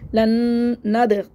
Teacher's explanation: दाल पे दाल साकिन पे कलकला हो गया